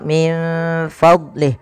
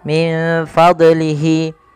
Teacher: Jangan sampai memantulkan huruf dot, yang dimana dot itu salah satu huruf yang tidak boleh mantul.